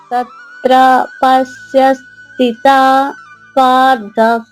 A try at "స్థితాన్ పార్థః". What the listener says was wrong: స్థితాన్ ఇక్కడ నా ఉంది. స్థితాన్ పార్థ.